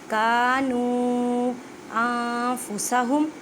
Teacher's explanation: چھوٹی مد ہے، 4 الف کی مقدار میں کھینچ کر پڑھیں